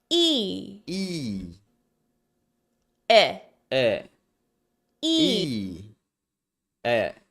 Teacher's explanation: the general position of the middle of the tongue is forward and up